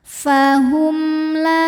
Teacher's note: karena mim sukun menghadapi huruf selain mim dan ba yaitu huruf lam cara bacanya mim dibaca dengan jelas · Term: izhar syafawi